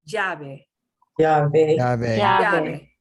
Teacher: a straight y sound is good, a little bit of a j, but not strong.